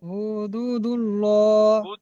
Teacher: আল্লাহ শব্দে ডানদিকে পেশ এসছে আল্লাহ লামকে পুর করে পড়তে হয়।